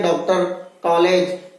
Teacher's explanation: तो इनका उच्चारण न तो आ के बराबर होता है, नहीं ओ की, बल्कि मध्य ध्वनि है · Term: आ और ओ के मध्य की ध्वनि